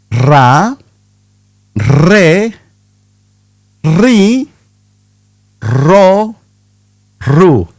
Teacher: Feel the tongue at the front of your mouth, not in the back like in English. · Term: double R